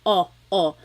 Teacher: your tongue gets kind of pushed back and down a little bit and the inside of your mouth is open and wide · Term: the letter O